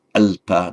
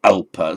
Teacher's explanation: the l is always a light l